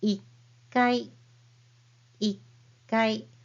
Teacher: you hear the pause in between the regular size hiragana